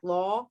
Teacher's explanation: Lawyer stays in one place. Law. It's just a big open mouth. All the jaw is pretty low. The tongue is way back.